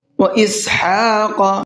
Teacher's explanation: وَإِسْحَاقَ، ہا کے اوپر کھڑا زبر ہے، اس کو کھینچ کر کے بھی پڑھنا ہے اور حلق سے بھی نکال کر کے پڑھنا ہے